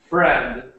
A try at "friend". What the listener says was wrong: When you were saying it, you were saying like a little sound after, like friend, friend. But we just say it like friend, and it ends at the friend.